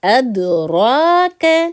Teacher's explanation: را پہ اوپر کیا ہے ہمارا کھڑا زبر ہے، تو اس را کو ہم موٹا پڑھیں گے